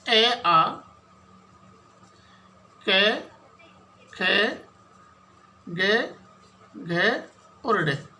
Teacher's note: तो कंठ से सीधी ध्वनि बाहर आ रही है